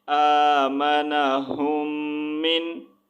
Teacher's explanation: اب یہاں پر ہم اخفاء نہیں کریں گے، یعنی کہ غنہ نہیں کریں گے